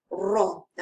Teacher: Sifat huruf dia bergetar